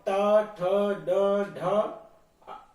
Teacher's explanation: ये मुंह के भीतर के अगले भाग के होते हैं, ठीक है। इसको बोलते हैं मूर्धव्य। ये जो हमारा माउथ है, मुंह है, इसका जो ऊपर का भाग है, दांतों के जस्ट ऊपर जो होता है, जहां हम अपनी जीभ छुला देते हैं अगले भाग को, देखिए, इसको बोलते हैं मूर्धव्य।